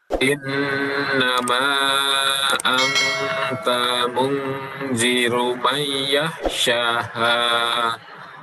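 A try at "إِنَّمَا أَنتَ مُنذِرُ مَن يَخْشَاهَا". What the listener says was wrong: Mayyakh ditahan lagi, nun mati bertemu dengan ya.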